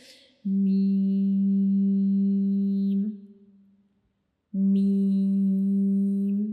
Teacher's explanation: मीम को पढ़ते हुए हमारा ऊपर वाला जो होंठ है और नीचे वाला जो होंठ है उनके खुश्क हिस्सा जो है वो दोनों आपस में एक दूसरे को टच करते हैं · मीम को पढ़ते हुए हमारे होंठों का जो खुश्क हिस्सा होता है वो एक दूसरे को टच करता है, तो मीम अदा होता है।